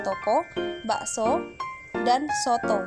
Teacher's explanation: Fonem O mempunyai dua macam realisasi, yaitu pertama, direalisasikan sebagai bunyi O apabila berada pada silabel terbuka